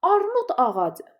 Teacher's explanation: Amma armud d-dan sonra a sait gəldiyi üçün olduğu kimi qalacaq. Yəni burada cingiltili tələffüz olunur.